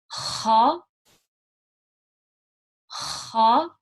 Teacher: Okay, so with that ha, we are trying to get it to have that slight gargle sound. So again, ha, ha, and let it release for a little bit.